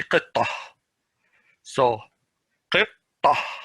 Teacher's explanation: But ta marbuta is, if you stop, it's pronounced as a ha. If you continue, it pronounces as a ta.